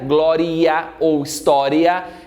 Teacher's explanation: dupla divisão silábica ess essa última sílaba ria Glória ou história essa última sílaba é formada por um ditongo crescente lembra lá do conceito o i é semivogal o a é